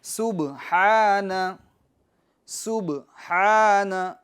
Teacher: آگے چلتے ہیں، تسبیح رکوع، سبحان، سبحان، سین باریک، سیٹی کی آواز، با میں قلقلہ، ہا، یہ بڑی ہا نکالیں گے اور اس پر کھڑی حرکات ہے، تھوڑا کھینچیں گے یعنی ایک الف کی مقدار